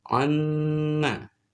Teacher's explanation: Yang satunya dalam keadaan bertasdid harus dibaca amma, ya. Jangan dibaca amma satu ketukan, tapi ditahan merapat bibir, ya, bibir atas bawah dengan sertakan dengung minimal 2 atau 3 harokat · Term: mim bertasdid